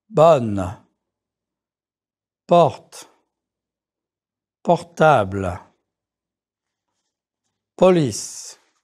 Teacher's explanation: Keep your mouth open and your tongue in the center. You drop your jaw, but you don't round your lips too much. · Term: more open French O